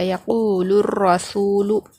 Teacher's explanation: لام سے را کو ملا کر پڑھیں گے، الف اور لام کو نہیں پڑھا جائے گا۔ یقول الرسول، اس طرح لام را زبر، لام را پیش لور پڑھیں گے۔ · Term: حروف شمسی